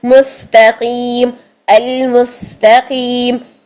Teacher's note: سانس اور آواز وہ بھی جاری ہونا چاہیے سین میں. سانس جاری، آواز جاری، اور سیٹی بھی